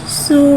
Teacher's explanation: सीन के ऊपर उल्टा पेश को एक अलिफ यानी 2 हरकत के बराबर खींच के पढ़ेंगे और उल्टे पेश को होठों की गुलाई के साथ अदा करके पढ़ेंगे।